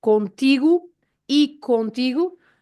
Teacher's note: the o at the end, the sound u.